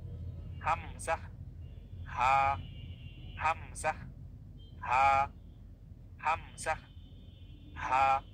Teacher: গলার একদম নিচের অংশ, এই গলার একদম নিচের অংশ থেকে দুইটা অক্ষর উচ্চারণ হয়, একটা হলো হামজা আর আরেকটা হলো হা